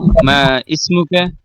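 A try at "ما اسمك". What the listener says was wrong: মা ইসমুকা, এটাকে আমি ভুল ধরে দিয়েছি না ভাই। মা ইসমুকাকে বলবেন মাসমুকা, মা ইসমুকা না, এই আলিফ উচ্চারণে আসবে না।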